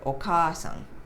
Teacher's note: so instead of putting another vowel we just make it longer